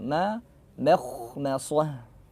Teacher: Intinya mim tipis, kha tebal. Bukan tipis banget ma atau mekh terlalu berlebihan enggak.